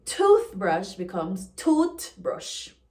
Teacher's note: the unvoiced TH in words becomes T. For example, toothbrush becomes toothbrush.